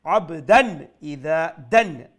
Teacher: অর্থাৎ তানবিনের যে সাউন্ডটা নুন সাউন্ড সেটা স্পষ্ট থাকবে। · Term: ইজহার